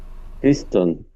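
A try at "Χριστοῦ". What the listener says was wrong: Acuérdense que esa U se lee como U. Christu sería.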